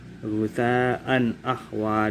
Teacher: Sebagai contohnya, ghusaan ahwa di sini dibaca an karena fathah tanwin bertemu dengan alif. Fathah tanwin bertemu dengan alif, maka dibaca idhar jelas tanpa dengung.